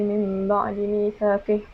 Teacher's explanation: menukarkan setiap huruf nun sakinah dan tanwin kepada mim yang ringan serta mengekalkan dengung. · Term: Iklab